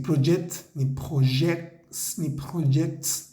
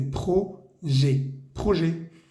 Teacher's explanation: Decimos no projet, no projet. La palabra proyectos no se pronuncia ni la T ni la S. No vamos a decir project, ni projects, ni projects.